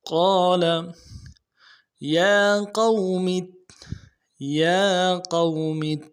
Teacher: یا قوم میں یا کے اوپر کھڑا زبر ہے، ایک الف دار میں کھینچیں گے، قاف کو موٹا کریں گے، واو لین ہے بغیر کھینچے پڑیں گے، اور میم کو آگے تا کے ساتھ ملائیں گے کیونکہ تشدید ہے تا کے اوپر، اور زور دیں گے۔